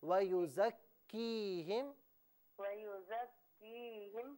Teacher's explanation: یہاں پر یا مدہ موجود ہے نا، تو اسے ایک الف کی مقدار کھینچنا ہے